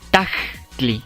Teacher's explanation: Se escucha ese pequeño saltillo, ese bueno ese esta se escribe como un simple puntito, lo que indica este saltillo u oclusión glotar en español. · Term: oclusión glotal